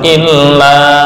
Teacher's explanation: lam ketika ditasdid jangan lama-lama jangan didengungkan